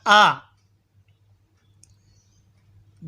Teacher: हमजा यह हलक के नीचे वाले हिस्से से अदा होता है